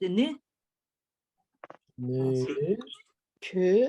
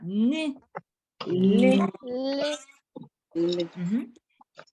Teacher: La langue, ça touche la gencive supérieure.